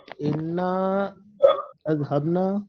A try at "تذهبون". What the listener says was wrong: انا نہیں لکھا ہوا ہے، دیکھیے